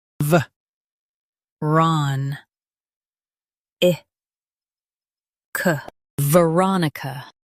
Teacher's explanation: Stress Ron and keep ih light.